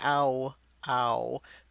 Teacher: you can see the lips starting out round and then ending up in that sort of w waving pattern